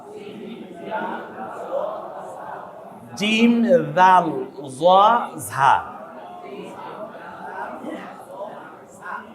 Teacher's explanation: জিম জিহ্বার মাঝখান ওই বরাবর তালু